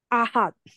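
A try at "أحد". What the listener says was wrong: না এটা বড় হা হয়ে যাচ্ছে আপনার কষ্ট করে হাটা বের হচ্ছে না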